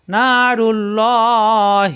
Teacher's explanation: আল্লাহ শব্দের ডানে পেশ আসে আল্লাহ শব্দ ল হবে পুর হবে মোটা হবে